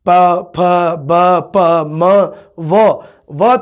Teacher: ਹੋਠੀ ਜਾਂ ਦੋ ਹੋਠੀ ਦਾ ਤੁਹਾਨੂੰ ਪਤਾ ਹੀ ਹੈ ਵੀ ਜਿਨ੍ਹਾਂ ਧੁਨੀਆਂ ਦੇ ਜਾਂ ਜਿਨ੍ਹਾਂ ਅੱਖਰਾਂ ਦੇ ਉਚਾਰਨ ਸਮੇਂ ਸਾਡੇ ਦੋਨੋਂ ਜਿਹੜੇ ਬੁੱਲ ਨੇ, ਹੋਠ ਨੇ, ਲਿਪ ਨੇ, ਜਿਹੜੇ ਸਾਡੇ ਦੋਨੋਂ ਲਿਪਸ ਇਹ ਆਪਸ ਦੇ ਵਿੱਚ ਟੱਚ ਕਰਦੇ ਨੇ